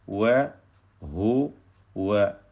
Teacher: രണ്ട് ചുണ്ടുകളിൽ നിന്ന് തന്നെ വാവിന്റെ ഉച്ചാരണം വരണം